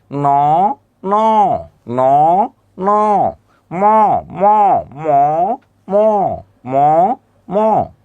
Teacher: তার মানে আসলে দুইটাই নাসিক্য, নাক দিয়ে উচ্চারণ হবে